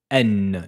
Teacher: la lettre Noun se prononce avec le bout de la langue qui rentre en contact avec le début du palais